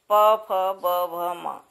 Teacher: प वर्ग के वर्णों को उच्चारण करने में ऊपर नीचे के होंठ आपस में टकराते हैं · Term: ओष्ठ